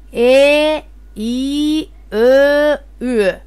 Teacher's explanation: Ичке үндүүлөрдү айтканда тилдин учу алга карай бир аз жүткүнүп, тилдин ортосу таңдайды көздөй көтөрүлөт да, өпкөдөн чыгып келе жаткан аба ичке чыгат. И, Ö, Ü. Ал эми эринге карай эрин үндүүлөр, эринсиз үндүүлөр деп бөлүнөт.